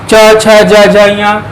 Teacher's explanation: हमारे तालु से केवल जबान हमारी टकरा रही है